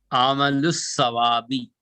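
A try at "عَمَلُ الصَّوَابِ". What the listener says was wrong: यहाँ क्या कर रहे हैं आप? अलिफ और लाम छोड़ रहे हैं। बस है, अब अलिफ लाम, आप अलिफ लाम ऑलरेडी यहाँ पे छोड़ दिए, तो यहाँ पे वो के बाद अलिफ आया तो वो को खींचना है, अलिफ को खींचना है आपको।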